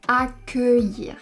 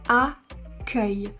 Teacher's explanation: Ici on prononce accueillir avec un E fermé parce que ce n'est pas la dernière syllabe du mot. La dernière syllabe c'est "-illir".